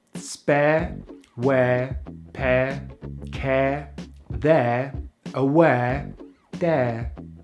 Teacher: So we start with the jaw mid open, the lips are spread and the tongue is at the front of the mouth for the short vowel /e/, and then we glide into the schwa sound, which we make by keeping our mouth very relaxed, moving the tongue into the center of the mouth and opening the jaw a little bit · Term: air diphthong